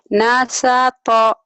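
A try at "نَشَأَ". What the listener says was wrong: Nasyato, shinnya mana? Nasyato, Nasyato, Nasyato, Nasyato.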